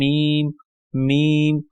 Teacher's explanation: होठों को आपस में मिलाने से जो है मीम अदा होता है · میم ہونٹوں کو آپس میں ملانے سے جو ہے میم ادا ہوتا ہے، میم میم۔